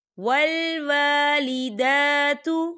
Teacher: دال کے اوپر کھڑی حرکات ہے تو ہم اسے دو حرکت کی برابر کھینچ کے پڑھیں گے